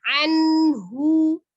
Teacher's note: Anhu ya sempurna tuh nun sukunnya izhar. Kemudian hu-nya monyongkan.